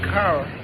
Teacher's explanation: American English is generally rhotic because the speaker pronounces the final r